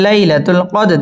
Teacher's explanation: দাল কলকলার হরফ ধাক্কা দিয়ে পড়তে হবে। কদেরি, র বারিক হবে।